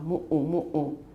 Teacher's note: It's M-U, glottal stop U, M-U, glottal stop U. It's reduplicated.